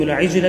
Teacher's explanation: عجل جیم پر میں نے قلقلہ کیا جو ہے